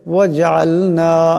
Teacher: জিম সাকিন, আওয়াজটা কলকলা হবে, জিম কলকলা হরফ